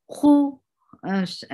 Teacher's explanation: Circle your lips for dhamma and make kha heavy. Khu lal. Give tawassut on lam.